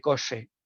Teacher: lo que no realiza es un fonema que es africado sordo, ¿vale? Lo sustituye por un fricativo sordo, luego yo debo de quitar por un lado el apicoalveolar y debo de inhibir igualmente el fricativo sordo. · el fonema que ha emitido es una apicoalveolar, una alveolar, pero sin embargo no ha hecho el palatal, predorso palatal